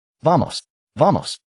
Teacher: The accent is on the first syllable.